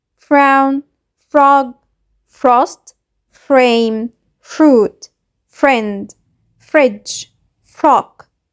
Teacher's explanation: هنطول شوية في صوت ف ونقرأ حرف الار ر، مش زي الراء بالعربي